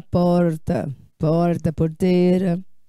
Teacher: se for um Paulista um Paulistano lá do interior de São Paulo ele puxa mais no R